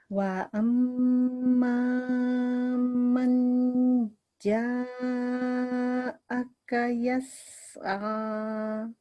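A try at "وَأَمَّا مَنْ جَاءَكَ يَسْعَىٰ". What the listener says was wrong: Amma manja. Kalau ada nun sukun, manja, kan? Itu cara bacanya jangan ke N, Ibu. Manja, bukan manja tapi manja gitu.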